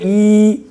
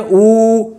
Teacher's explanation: जैसे हम लोग बोलते हैं ई तो ये ऐसे फैलता है, जब बोलते हैं ऊ तो ये गोल होता है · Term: होंठ की आकृति